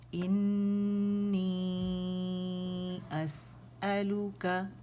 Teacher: مد منفصل جائز بن رہی ہے تو اسے کھینچیں گے